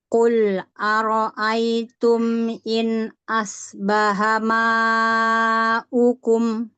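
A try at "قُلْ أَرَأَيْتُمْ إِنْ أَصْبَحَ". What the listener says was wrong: Diulang sedikit, shotnya kurang tebal. In of, ya, in of, ya.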